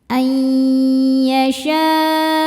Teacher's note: nunnya dimasukkan ke ya sambil kita tahan dengungkan. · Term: idghamunah